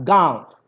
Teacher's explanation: गांव बोलिएगा तो हवा जो है मुंह से भी निकला और नाक से भी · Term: अनुनासिक